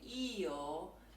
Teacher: in Italian if I say yo there are two really distinct vowels